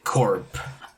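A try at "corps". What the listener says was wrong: Core. Core. The P is silent.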